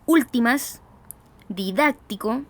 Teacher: reciben carga de voz en la ante penúltima sílaba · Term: palabras esdrújulas